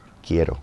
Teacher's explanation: My vowels are short. I'm hitting that R.